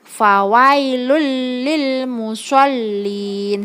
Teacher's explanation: karena ada dhomah tanwin bertemu dengan huruf lam cara membacanya yaitu dengan memasukkan dhomah tanwin ke huruf lam dan dengan tidak mendengung jadi biasa tidak mendengung tapi huruf lam nya masuk ke deh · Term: idgham bilagunnah